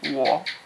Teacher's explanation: it's a third tone, so you're going to want to find the lowest part of your talking voice and make it short.